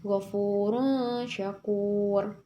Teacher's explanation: karena waqaf sebelumnya wau Contohnya seperti gofurun sakur di situ terdapat ro sukun yang sebelumnya ada wau sukun juga maka cara membacanya yaitu tebal